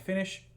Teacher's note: tenemos el sonido de la sh que tampoco tiene vibración